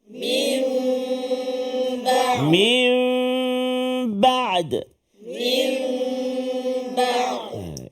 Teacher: fokus kita nun mati bertemu dengan ba apa nama dia iqlabu tukar menukarkan bunyi Nun itu kepada mim kan sebab tu atas Nun tu ada tanda mim kan tapi berserta